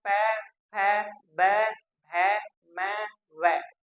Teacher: तो ये सभी के सभी व्यंजन दोस्तों ओष्ठ्य कहलाते हैं, क्योंकि इनका उच्चारण स्थान हमारे होठों से होता है